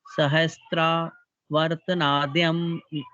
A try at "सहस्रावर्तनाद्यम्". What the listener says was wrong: हाँ, तो इसमें त्रा नहीं है, सहस्रा है। सहस्रा हाँ, सहस्रावर्तनाद्यम्